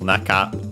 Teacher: even though Naka on its own would be accented on the first syllable, this one is unaccented, Naka. And yeah, so be careful.